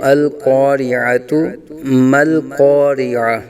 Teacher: اکثر جو ہے وہ دیکھا جاتا ہے کہ القاریہ کو القاریہ پڑھ جاتے ہیں، یعنی کہ عین کی جگہ پر یا کی آواز نکالتے ہیں، القاریۃ ما القاریہ۔ تو یہاں یا کی آواز نہیں بلکہ عین کی آواز نکالیں گے